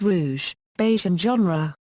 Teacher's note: a voiced palato-alveolar sibilant in some words of French origin